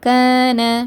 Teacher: அலிஃப் மத்தாக்கு முன்னாடி என்ன இருக்குது, ஜபர் இருக்குது. அதனால் 2 ஹரக்கத்து நீட்டி ஓதுங்க